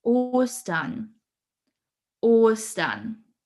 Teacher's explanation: we have a long stretched o sound in the beginning